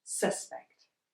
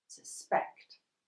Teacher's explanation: In a two-syllabled word - that is a word with two sounds... If we have a noun, most of the time we emphasise the first syllable... suspect, and if we have a verb, we emphasise the second syllable